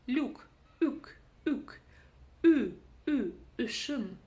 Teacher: убираем букву Л, и буква Ю будет уже звучать как Ü. Там мы уже не слышим и краткую после согласной. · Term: звук Ü